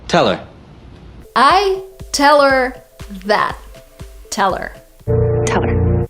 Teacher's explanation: So we don't even have two words here. We don't have tell and we don't have her. We have one word that is teller.